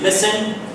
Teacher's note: remember the word listen, T is silent.